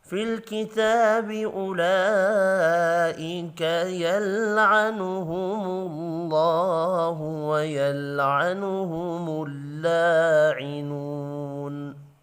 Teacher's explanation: لام کے اوپر بڑی مد ہے 5 الف کے برابر کھینچ کر پڑھیں گے